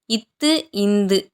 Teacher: இட்டு, இன்னு நாவின் நுனி அன்னத்தின் நுனி. இத்து, இந்து நாவின் நுனி மேல்வாய் பல்லின் அடி